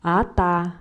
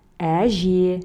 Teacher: Ата звучит твердо, потому что в нем твердый гласный звук. Әже мягкое слово, потому что в нем присутствуют мягкие гласные звуки.